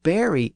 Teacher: The modern pronunciation with the A sound is the Kentish pronunciation